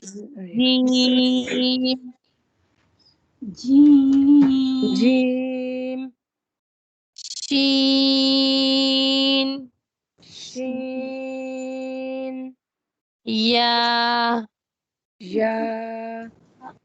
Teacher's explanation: وسط لسان بالمقابل اوپر کا تالو، یعنی وسط لسان جو زبان کا درمیان ہے اسی کے مقابل بالکل پیرالل اوپر جو تالو کا جو حصہ ہے وہ ہوگا.